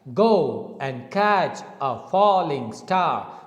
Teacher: the word go is strong and the word and is weak catch is strong a is weak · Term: strong weak